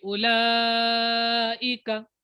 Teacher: ऊ को लंबा नहीं करेंगे